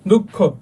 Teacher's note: বিসর্গটা basically double অথবা দ্বিত্বর উচ্চারণ করবে